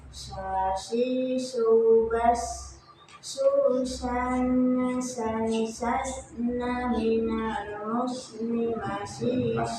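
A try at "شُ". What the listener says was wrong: Udah bagus coba, tapi yang harakatnya doma, yang sini harakatnya doma. Shu coba. Shu. Nah, itu masih kayak sin.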